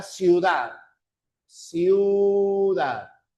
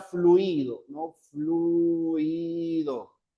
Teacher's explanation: cuando hay homogéneo siempre es la segunda cerrada la que lleva fuerza de voz